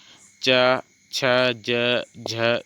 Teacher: के उच्चारण में जीहा का अग्र भाग कठोर तालू को स्पर्श करता है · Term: तालव्य व्यंजन